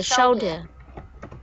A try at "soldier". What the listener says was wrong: Soul, not shoal. Soul.